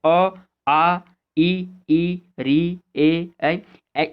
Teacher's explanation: ये वैसे वर्ण होंगे जिनको बोलते समय हमारे होंठ गोलाई नहीं लेते। अ, आ, ई, री, ए, ऐ, इनको बोलने में आपके जो ओष्ठ की आकृति है वो बिल्कुल सामान्य बनी रहती है, इसलिए इनको अवृत्तमुखी कहा जाता है।